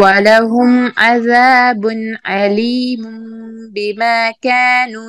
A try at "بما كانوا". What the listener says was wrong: كانوا make sure you finish the واو ما yeah you make it short